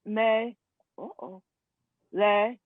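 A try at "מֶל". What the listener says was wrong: It's me, and then you connect because you can't say the lamed by itself because there's no vowel. So you have to connect. So it's me, Mel.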